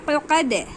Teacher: عین آیا ہے حلق کے بیچ سے ادا ہوگا